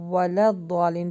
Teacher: واو ہے تو ہونٹوں کو گول کر کے پڑھیں